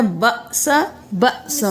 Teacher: باس اور باسا نہیں کرنا، جھٹکا دے کر پڑھنا ہے